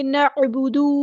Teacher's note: نعبد، ایسے نہیں کرنا، دال کے پیش کو لمبا نہیں کرنا